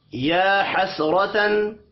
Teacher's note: حسرتن را زبر کی وجہ سے پر پڑھا جائے گا. تن تنوین کے بعد حروف حلقی آ رہا ہے، یہاں پر اظہار حلقی ہوگا، غنہ نہیں ہوگا · یا کے اوپر کھڑی زبر ہے، ایک الف کے برابر کھینچ کر پڑھیں گے. حسرتن را زبر کی وجہ سے پر پڑھا جائے گا.